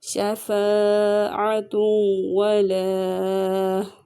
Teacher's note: نون تنوین کے بعد حروف یرملون میں سے واو آیا ہے تو یہاں پہ ادغام بلا غنہ ہوگا